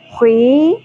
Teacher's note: خا کی زیر کو یا کے ساتھ ملا کے حرف مدہ ہے جو کہ ہم نے ایک الف کے برابر کھینچنا ہے